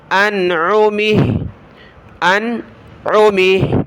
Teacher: جب رکیں گے تو ہا کو ساکن کر دیں گے · ہا کو ہوا میں اڑائیں گے